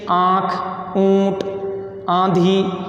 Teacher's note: अनुनासिक होते हैं जो नाक और मुंह दोनों से जिसका उच्चारण किया जाता है, वो अनुनासिक होता है।